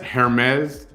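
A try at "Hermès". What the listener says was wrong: Hermes. The H is silent. It's Hermes.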